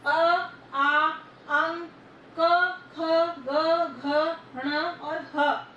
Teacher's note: ये सारे वर्ण हमारे कंठ से बोले जा रहे हैं